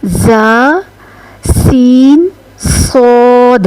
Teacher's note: जब यह अदा होते हैं तो इनको अदा करते वक्त सीटी की सी आवाज आती है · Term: हरूफ सफीरिया